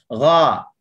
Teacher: Huruf ghain dia tergolong dalam isti'la yang infitah. Pangkal lidah sahaja terangkat tapi hujung lidah kita mendatar.